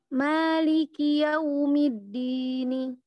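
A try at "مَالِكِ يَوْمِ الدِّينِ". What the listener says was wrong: Nah, masih satu tuh. Maliki yaumiddin. Din. Bukan di.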